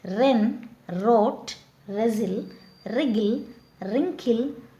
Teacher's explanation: W is followed by R. We don't pronounce W. We have to pronounce from R.